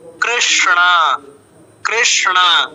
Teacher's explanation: দুইটাই মূর্ধাতে উচ্চারিত হয়, মূর্ধন্য স, মূর্ধন্য ন